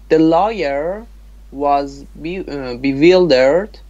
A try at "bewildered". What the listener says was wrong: Yes, it is W, not V, so don't say bewildered.